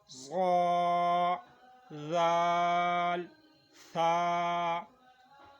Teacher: یہ زبان کی نوک جب انہی اوپر کے اگلے دونوں دانتوں کی نوک کی طرف والے آدھے حصے سے لگیں گے تو یہ 3 الفاظ ادا ہوں گے